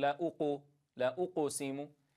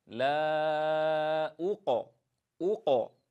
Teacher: القاف ساكنة سبقها ضم، فنحاذر من استمرار ضم الشفتين عند القاف الساكنة، فلا نقول لا أقسم، وإنما أجعل القاف ساكنة.